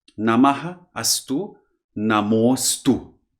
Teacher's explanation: When aha is followed by a word beginning with a short a, then the aha turns into o, namo astu, and the a in astu vanishes. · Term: Namostu rule